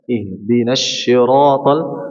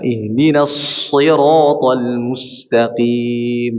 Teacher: tajamnya suara pada pendengaran huruf shad ya di antara tajam suara atau saofir desisan